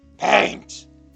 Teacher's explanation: She has a consistent amount of vocal fry, but that outburst was hoarse.